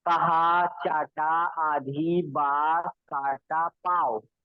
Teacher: मुंह का ज्यादा प्रयोग करना है, नाक की तरफ जाना नहीं है।